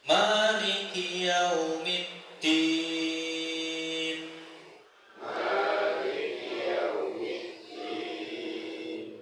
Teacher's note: huruf kaf itu memiliki sifat hames. Hames niku nafasnya berhembus.